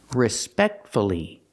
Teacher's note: you have four syllables the stress is on the second syllable